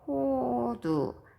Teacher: 모음 오와 모음 우는 모두 다 입술이 동그래지는 원순 모음이고요